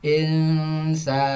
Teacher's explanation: Pas di huruf sa-nya itu dipanjangkan insana. Seperti itu. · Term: mat fathah